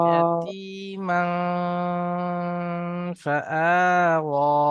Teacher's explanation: তানবিনের আওয়াজকে নাকে তুলে একালিপ পরিমাণ টান দিয়ে পড়তে হয় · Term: ইকফার